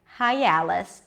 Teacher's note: you'll hear a y sound coming in without intentionally adding it